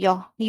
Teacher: जो य है वो तालू य जो य है य य बोलने में जीभ जो है तालू में ही रह रही है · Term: अर्ध स्वर